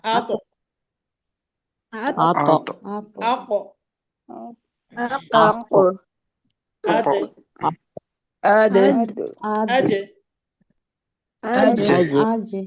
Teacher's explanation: কলকলা করতে হবে, মানে প্রতিধ্বনি হবে।